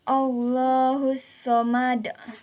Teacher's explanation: Qala kubro adalah terjadi apabila salah satu dari 5 huruf qala berharakat sukun pada akhir kata dan dibaca mati atau sukun. Cara membacanya adalah dipantulkan dengan berat atau tebal.